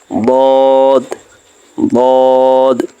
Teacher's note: জিহ্বার গোড়ার কিনারা উপরের মাড়ির দাঁতের গোড়ার সঙ্গে লাগাইয়া